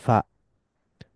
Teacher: Inner bottom lip touches the edges of the upper front teeth. এর ফলে air flows through the small gap between the lip and the teeth.